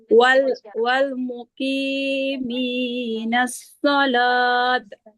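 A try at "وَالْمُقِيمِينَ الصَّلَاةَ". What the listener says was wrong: Sholah. Bukan sholat. Jadi huruf H. Wal muqiminas sholah. Sholah. Sholah.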